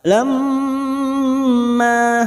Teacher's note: mim yang bertasdid gunnah musaddada kita dengungkan selama 3 harakat. Lamma, ma fathah diikuti alif 2 harakat.